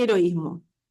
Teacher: Primero tenemos la vocal abierta y después tenemos la cerrada. Pero esa cerrada también está acentuada. Entonces van separadas, ¿sí? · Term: hiato